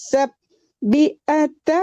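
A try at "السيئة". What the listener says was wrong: Sayyi'ata Mandeh ya, sayyi bukan sabdi ya, bukan baik tapi ya.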